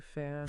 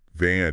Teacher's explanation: your vocal cords aren't vibrating at all. It's just the air flowing between your teeth and your lip. Okay. So think of it like you're trying to blow out a candle.